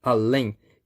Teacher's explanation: Além, bem, essa palavra aqui, a sílaba tônica dela caiu na última sílaba. Além. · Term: oxítona